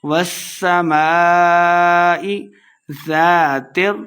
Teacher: ہم نے اس کو لمبا کر کے پڑھنا ہے، والسماء ذات، زال کے اوپر نرمی کے ساتھ پڑھیں گے، الف مد ہے، دو حرکات لمبا کر کے پڑھنا ہے